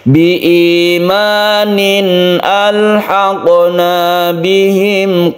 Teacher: qafnya qalqalah karena di tengah maka disebut qalqalah sughra